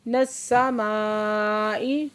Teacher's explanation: नस्समाई मद्दे मुत्तसिल है, 5 से 6 हरकत खींच के पढ़ेंगे